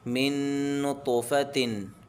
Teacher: نون ساکن کے بعد حروف یرملون میں سے نون آ رہا ہے، تو یہاں پر غنہ ہوگا، ادغام ہوگا، تو میں قلقلہ ہوگا، اور فا کو جلدی پڑھیں گے، حرکت ہے، تا پہ تنوین ہے۔